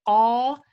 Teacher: the place where the letter come from is narrow, and also the furthest part of the tongue goes also up.